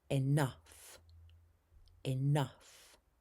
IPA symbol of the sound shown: ʌ